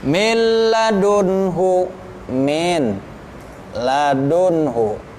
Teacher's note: ro ini salah harfani ada dua hurufnya lam sama ro ini dilebur juga tetapi tanpa dengung ya idgham bilagunnah tanpa didengungkan